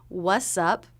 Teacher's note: we also heard it as wussup where the t was dropped altogether